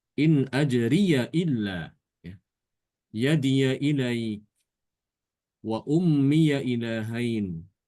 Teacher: Adapun Imam Hafs membaca dengan fathah ya, memfathahkan ya idhofah.